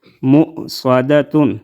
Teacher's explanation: انها علیہم، عین زبر ع، لام یا زبر لی، ہا میم زیر ہم، علیہم، میم حمزہ پیش مو، صاد زبر صا، دال زبر دا، تا دو پیش تن، مؤصدۃ، صاد کو ہم موٹا ادا کریں گے، یہ بھی مستعلی حروف میں سے ہے